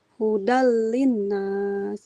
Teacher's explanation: dari unzil fihil Quran coba ibu unzila fihil quranu hudallinas jangan nas hudallinnas s biasa sin hudalinas hudal nah dalnya langsung masuk ke lam tanwin bertemu lam idgham bila gunah hudallinas hudalinas Nah, dalnya enggak panjang, tidak huda, tapi hudal double l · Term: lamnya double